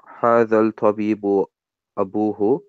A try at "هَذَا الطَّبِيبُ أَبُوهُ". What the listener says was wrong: I should not be hearing the lam because the ta is a sun letter. It's not طَبِيبُ. The word is not طَبِيبُ.